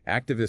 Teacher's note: Activist stress on act